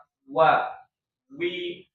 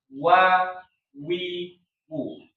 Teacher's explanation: Karena tadi dia sebenarnya bukan di ujung bibir, tapi keluarnya itu di tengah-tengah antara bibir atas sama bibir bawah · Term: wau